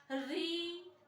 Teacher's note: उसी तरह से अगर हम री की बात करें तो री में देखिएगा आपकी जो जिह्वा है ना वो पलटा खा रही है, आपकी जिह्वा पीछे को पलट रही है, गोल हो जा रही है, जिसका उच्चारण स्थान कह दिया मूर्धन्य।